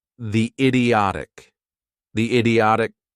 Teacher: I kind of did a link there, but what sound did I make? The idiotic. It's a Y sound.